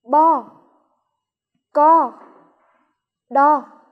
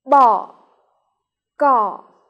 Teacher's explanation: nhóm thứ nhất gồm những tiếng mang thanh ngang nhóm thứ hai gồm những tiếng mang thanh hỏi